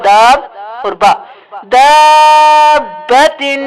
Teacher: دال زبر الف مد با داب، با زبر با دابا، تا دو سے تن، دابتن۔ ذرا سختی سے با کو ادا کریں گے کیونکہ دو بار ادا ہوگا